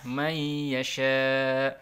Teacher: May yasha ini ada nun sukun ketemu ya, disebut idgham bi gunnah. Dibaca langsung masuk ke ya, nunnya tidak dibaca